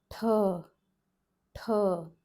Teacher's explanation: This time this palate T has an aspiration. So tip of the tongue still touches the palate, touches the roof of your mouth, front forward palate, and aspiration is added from the throat